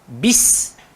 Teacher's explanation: Bagi huruf ba dia keluar dekat bibir, dan sin hujung lidah langgar belakang gigi.